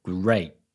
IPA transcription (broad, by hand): grea_